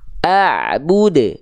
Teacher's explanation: pantulannya lempar pantulannya jangan ditahan-tahan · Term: Qalqalah